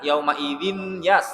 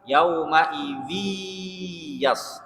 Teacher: n-nya dihilangkan, langsung dimasukkan ke huruf ya-nya. Nah, itu namanya idgham, memasukkan, menghilangkan huruf nun-nya, n-nya dimasukkan langsung ke huruf ya.